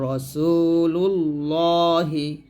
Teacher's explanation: লামের ডানে পেশ আসছে লামটা মোটা করবেন